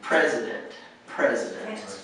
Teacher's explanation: So the emphasis is on the first syllable.